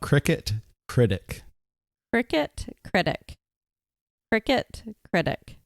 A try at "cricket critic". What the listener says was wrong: Slowed down on that one. Got to be able to say them fast. Oh, jump on them.